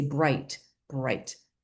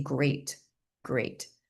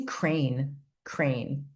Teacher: b for bright, g for great, and k for crane are all stop sounds